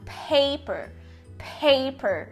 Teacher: Para deixar essa transcrição mais precisa, você pode colocar também um Hzinho pequeno depois do primeiro P, para dizer que ele é aspirated, que ele é aspirado. Então, paper, paper, né?